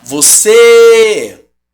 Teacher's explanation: Você, mesmo sendo fechado, é a sílaba tônica.